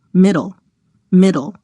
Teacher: instead of pronouncing a vowel before the L you go straight from the consonant to the L to make the syllabic L position the tongue as you would